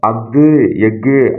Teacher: அத்து எக் ஆகிய சொற்களில் ஆயுத எழுத்து தனக்குரிய அரை மாத்திரை அளவில் முழுமையாக ஒலிக்கிறது